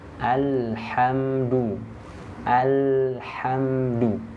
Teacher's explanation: huruf lamnya dialirkan di situ AL nah tidak terlalu panjang alirannya jangan Alha tidak pendek saja ya alirnya sedikit saja Kenapa karena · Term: bainiah